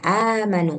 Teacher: Berarti ee hamzahnya ini berbaris ee atas. Kemudian alifnya itu sebenarnya adalah hamzah yang sukun gitu. Jadinya panjangnya dua harkat.